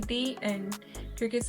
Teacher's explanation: हम उसको द end नहीं बोलते हैं, उसको बोलते हैं दी